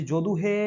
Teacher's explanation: এই যে স্বরধ্বনিগুলো, এই অ থেকে যে ঔ পর্যন্ত আমরা পড়লাম, এই স্বরধ্বনিগুলোকেই আমরা জোরে, মানে স্বাভাবিক যেভাবে উচ্চারণ হয় তার থেকে আমরা জোরে টেনে উচ্চারণ করি, সেটাকে প্লুতস্বর বলা হয়